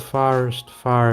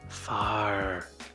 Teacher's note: I hear the R's. It's rhotic.